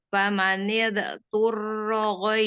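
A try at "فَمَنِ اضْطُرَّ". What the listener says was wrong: Pamanil. Jangan dipantul Mi.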